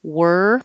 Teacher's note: This is probably the most requested word to practice pronunciation of because it is a weird movement going from the R, were, my tongue tip is curled back